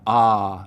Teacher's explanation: the lot vowel which you know normally lives back here your tongue cupping low down in the back for an open ah sound moves forwards towards where trap used